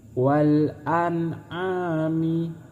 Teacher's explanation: Terus selanjutnya nun mati bertemu dengan ain, ini disebut idhar. Cara membaca idhar yaitu dengan cara jelas.